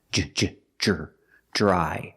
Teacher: Dr together makes a j sound like juice and jump